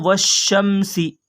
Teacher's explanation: لام کی آواز نہ آئے گی، نہ پڑھا جائے گا · جیسے والشمسی، یہ دیکھیے الف اور لام، اگر آگے تشدید آ گئی تو واو کو شین میں ملائیں گے، نہ الف پڑھا جائے گا اور نہ لام پڑھا جائے گا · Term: حروف شمسی